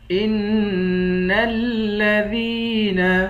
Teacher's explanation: ذال کو یا کے ساتھ ملا کر، یا کو ایک الف کے مقدار کھینچ کر پڑھیں گے